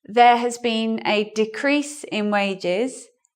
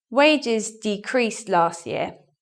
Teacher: decreased is in the verb position so we swap we stress the second syllable